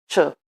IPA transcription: t͡ʃ